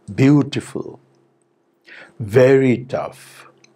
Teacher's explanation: the fall is steep from very high to low rather than from mid high to low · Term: falling tone